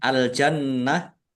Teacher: Alif lam qamariah ditandai lamnya dibaca sukun. Nunnya nun tasdid dibaca ghunah. Ditahan biar tampak mendengung. Jannah ta marbutah ya.